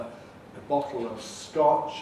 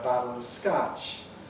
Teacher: lot well in our being song we have a rounded back americans typically have an unrounded vowel rather than a bottle of scotch american sarah battle of scotch